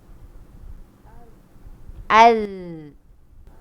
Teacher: Kita cuma keluarkan dia daripada gigi je. Bukan kita gigit lidah kita. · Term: zal